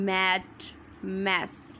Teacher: voiced होंगे bilabial होंगे और नेजल होंगे ठीक है यानी नाक से आवाज़ निकलेगी